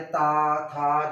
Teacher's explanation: दांत से बोले जाने वाले ता था, देखिए बोलते हो तो आपके दांत टच करते हैं